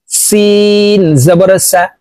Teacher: সিন হরফ বাহিরে বাতাস বের করে উচ্চারণ করব।